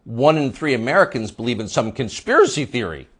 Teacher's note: the upspeak, the rising inflection at the end of the sentence. That's a familiar tick in Brooklyn.